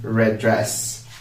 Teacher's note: red ends with the d dress starts with the d so i make these two words share the same d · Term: linking the words